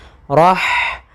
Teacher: ha sifatnya adalah sifat hamas, yaitu jaroyanu an-nafas, hamas, yaitu jaroyanun nafas, artinya mengalirnya nafas kita.